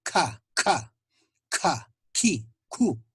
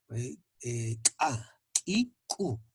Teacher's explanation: el postdorso de la espalda de la lengua choca al velo del paladar. Es el lugar donde produce el sonido. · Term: fonemas velares